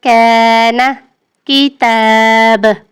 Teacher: کاف زبان کی جڑ اور تالو کے سخت حصے سے ادا ہوتا ہے۔ اگر کاف ادا کرتے وقت آپ کی زبان کی جڑ تالو کا سخت حصہ آپس میں مل رہا ہے تو آپ کا کاف بالکل صحیح ادا ہو رہا ہے۔